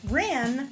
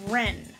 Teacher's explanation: So when you're nasally, your ah sounds like eh, and people misunderstand the vowel.